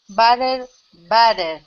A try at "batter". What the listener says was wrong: Because when you say the batter in the sentence, sometimes it sounds a bit like butter. So really try batter.